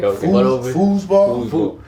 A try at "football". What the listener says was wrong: You gotta say it with the foot. Football.